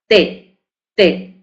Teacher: Es oclusivo y es dental porque la pronunciamos con los dientes, ¿verdad? Con el sonido es un poco palatal, pero sobre todo dental porque es hacia adelante de la parte superior de la boca, T, ¿verdad?